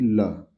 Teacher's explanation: हवा जीभ के बगल से होती हुई निकल जाएगी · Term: पार्श्विक व्यंजन ल